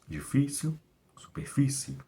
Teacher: ela é uma paroxítona, a penúltima sílaba é mais forte